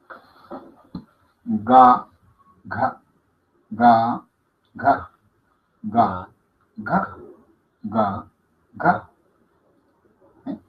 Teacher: Soplada, oclusiva y sonora. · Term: velar o gutural